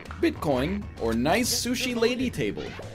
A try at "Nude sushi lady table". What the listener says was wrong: You did not read that right. You said nice sushi lady table.